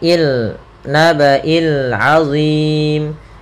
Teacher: alif lam yang dia tertulis dan juga dibaca dengan jelas suara suara lamnya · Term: alif lam qamariyah